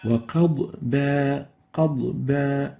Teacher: Without qalqala, without stressing it so much. You have to make sure to keep the Dhad loose and avoid giving it qalqala.